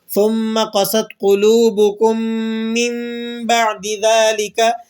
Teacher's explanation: یہاں پر ہم اقلاب کر رہے ہیں، چینجنگ کر رہے ہیں کہ نون ساکن کی آواز کو ہم نے میم کی آواز سے چینج کر دیا۔